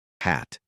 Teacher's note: just a breath of air from the throat. No contact anywhere. Light and airy.